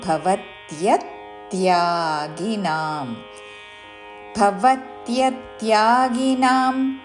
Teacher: మహాప్రాణక్షరము భ దాని పక్కన వ మీద త్య మీద ఆఘాత తీసుకుంటూ